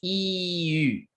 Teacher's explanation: if you round your lips while pronouncing an E, what happens? Well, it goes E-U. You get the sound U, which is a sound used in languages like French or German. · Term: closed front rounded vowel